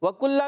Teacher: وَكُلَّ میں واو کو دونوں ہونٹوں کی گولائی سے ادا کریں گے. کاف باریک رکھنا ہے، کاف پر پیش ہے.